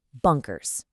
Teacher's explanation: That first syllable, it carries the primary stress. Whether you're using the British or the American pronunciation, this is exactly where you put your vocal energy.